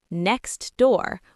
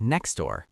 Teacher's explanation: We don't say the T in next. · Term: elision